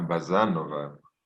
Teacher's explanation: The second syllable is stressed, Bazanova. Ah, Bazanova.